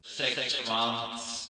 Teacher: Let's look at the words 6 months, where the soft palate drops down just for the nasal portion, mun. 6 months.